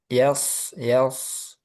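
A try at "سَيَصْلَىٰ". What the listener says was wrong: Yas itu masih syin. Coba ke sin.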